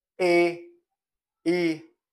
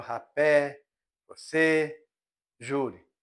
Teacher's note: São pronunciadas com a parte anterior da língua gradualmente levantada em direção ao palato duro. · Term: anteriores